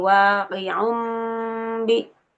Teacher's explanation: bunyinya yang ditukar itu dari bunyi n menjadi bunyi em ya. Un menjadi um. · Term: iqlab